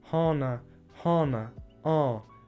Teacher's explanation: Da ist es ein Vokal, der ist sehr weit hinten, fast schon ein O.